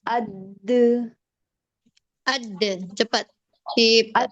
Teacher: mempunyai sifat qalqalah, ada getaran atau pantulan suara pada huruf saat disukun